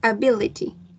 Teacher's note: Y se acentúa en la segunda sílaba, el stress, ability.